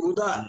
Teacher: ఊధ మహాప్రాణం దీర్ఘము మహాప్రాణం రెండు ఉన్నాయి